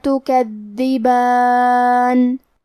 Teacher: کلمت تکذبان میں دال پہ تشدید ہے تو ہمیں 2 حرف کے برابر دال کو پڑھنا ہے اور دال کی ادائیگی زبان کے سر اور اوپر والے دانتوں کے اندرونی کناروں سے ہے.